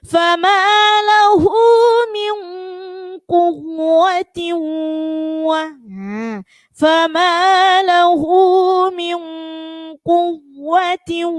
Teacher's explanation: jadi wawu yang pertama hanya ditekan, kemudian wawu yang kedua itu mendengung. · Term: idgham bi gunnah